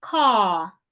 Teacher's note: The word CAR in standard British English is pronounced car. The letter R at the end of that word is not pronounced.